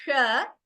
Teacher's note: is also different and here again अनुभवी श्याम so this श the tongue it curls up and it is a मूर्धन्य श